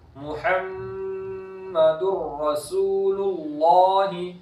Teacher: देखो मीम मुशद्दद है इसलिए गुन्ना किया